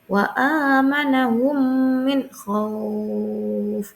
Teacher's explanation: memasukkan huruf mim ke dalam huruf mim disertai suara ghunah sekitar dua harakat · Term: idqam mutamsilan